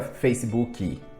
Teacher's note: a gente coloca um i extra que nem existe aí.